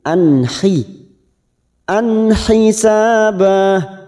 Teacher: kita samakan dengan sebelumnya apaan fathah tanwin fathatain yang bertemu ha namanya bacaan izhar halq kita baca jelas tanpa mendengung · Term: idhar